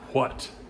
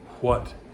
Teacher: That's the very English way, and the correct way, pronouncing that or voicing the H.